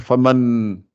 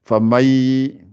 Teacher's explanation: Après le ma, j'attaque le. Je ne passe pas par le nun, je supprime le nun. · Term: idram